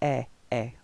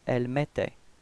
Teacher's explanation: when you've got this two T right after the E, it does give you the pronunciation for the E, it's open